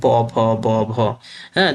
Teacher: দুই ঠোট ছাড়া এ ধ্বনিগুলো উচ্চারণ করা সম্ভব না। এইজন্য এই অষ্ঠ ধ্বনি অষ্ঠ ব্যঞ্জন উচ্চারণের ক্ষেত্রে মুখ্য ভূমিকা পালন করে নিচের ঠোট এবং উপরের ঠোটটা গৌণ।